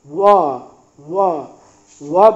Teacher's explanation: ल ल आपका जीभ दांत की ओर जा रहा है, दंत। व व व बोलेंगे तो आपके दांत और ओष्ठ का मिलन हो रहा है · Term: दंतोष्ठ